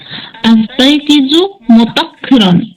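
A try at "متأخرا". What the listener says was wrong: মুতাআক্খিরান হামজা আছে মুতাআক্খিরান।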